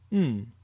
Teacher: it is not an n Sound but rather a mix between an n and an M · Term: the nasal sound